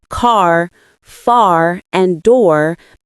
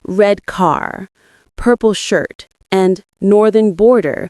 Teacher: Words like car, far, and door maintain that strong R sound at the end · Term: rhotic R